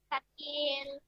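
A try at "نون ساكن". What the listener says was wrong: নুন সাকিন জোরে মুখ সামনে আনেন কেন দূরে সরে যাচ্ছেন বারে বারে নুন সাকিন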